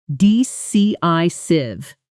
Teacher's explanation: The stress falls on the second syllable of decisive